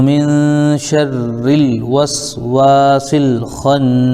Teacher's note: خا پر زبر ہے لیکن آگے نون پر تشدید ہے، تو خا کو نون ملا دیں گے، اور نون پر تشدید ہونے کی وجہ سے 1 الف غنہ ہوگا